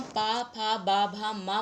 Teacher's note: ये वर्ण बोलते समय हमारे होंठ एक दूसरे को स्पर्श करते हैं